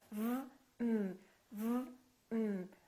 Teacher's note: my lower lip is touching my upper teeth. V, And then my tongue is touching right behind my upper teeth.